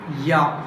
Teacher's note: Front of the tongue in coming in contact with the hard palate. So here front of the tongue coming into contact with hard palate while producing ya sound. That's why it is called, this ya sound is called palatal.